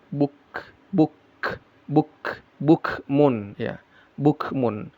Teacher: Kaf yang ee sukun dibaca ada ee hamesnya ada udara yang keluar ya. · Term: Kaf yang sukun